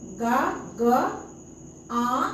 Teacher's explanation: मुंह से तो ध्वनि निकला निकलेगा ही साथ साथ उसके पीछे नाक से भी ध्वनि निकलेगा नाक और मुंह दोनों से ध्वनि निकलेगा जैसे चांद अब चांद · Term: अनुनासिक